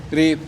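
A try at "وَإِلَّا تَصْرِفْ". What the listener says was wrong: Agak dibuka dikit tuh, Pak. Rif.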